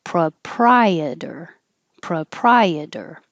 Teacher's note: the pro is not stressed so it's more likely to change to uh